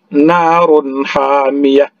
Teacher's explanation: Bertemu dengan huruf ha. Ha ini adalah huruf salah satu izhar, maka diizharkan. Narun hamiyah, jangan didengungkan.